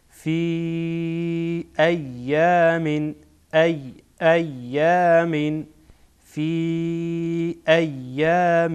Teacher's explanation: فی اینجا مد منفصل هست چرا که بعد از یا که حرف مد هست حمزه سبب مد آمده در دو کلمه بنا مد منفصل هست